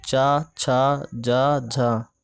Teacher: तो तालव्य व्यंजन में चा वर्ग आता है